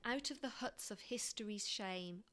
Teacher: look at the alliteration and sibilance on the first line they create a hushed sound we've got the this and the sh sound so it creates